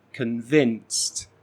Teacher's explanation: we're using that schwa sound at the beginning to reduce the first syllable